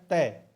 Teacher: जो जीभ है वो दांत के टकरा रही है